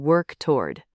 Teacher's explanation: Do not pronounce the w too heavily in toward. Just slide smoothly from the k in work right into the t, creating a nice flowing rhythm.